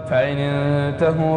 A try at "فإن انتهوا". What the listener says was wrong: فإن انتهوا لا مو غام، الهاء ما هي مضمومة مفتوحة. فإن انتهوا لا فإن انتهوا